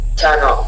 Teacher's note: On lit même plus le R. On dit juste turn.